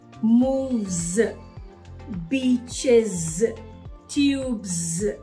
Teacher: s also makes the z sound in all words that end with e s